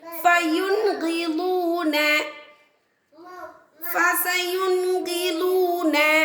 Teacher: ஸோ நம்ம நூனே சாக்கின் உள்ள நூனை வெளிப்படுத்தி ஓதுறோம்.